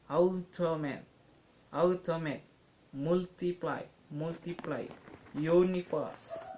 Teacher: there is usually primary stress on the first syllable, followed by an unstressed syllable and secondary stress on the third syllable